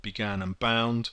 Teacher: that's a plosive sound because the air literally explodes out of your mouth